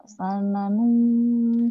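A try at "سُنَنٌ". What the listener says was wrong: Qad khalat min qablikum sunanung. Sunanung, jangan sanunung. Sunanung ya.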